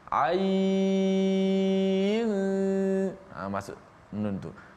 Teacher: Dah habis 4 ataupun 6 harakat pada ain, barulah masuk nun.